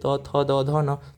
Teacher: आप बोलते हुए फील करना आपका जो जीभ है वो दांत में टच होता है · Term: त वर्ग